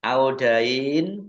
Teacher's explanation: Dibaca ya melunak panjang 2 harokat. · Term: mad layin